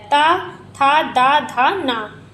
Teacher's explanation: त, थ, द, ध, न का उच्चारण स्थान दंत से होता है। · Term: ता वर्ग